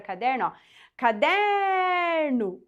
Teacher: Qual que é a sílaba que se estende é a sílaba do meio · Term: sílaba tônica